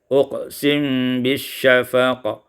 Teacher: Pada ayat yang ke-16, uqsimu bisyafaq, iskanul mim ma'al ikhfa, disukunkan mim dengan ikhfa